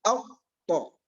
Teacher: فإن النفس ينحبس انحباسا تاما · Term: الجهر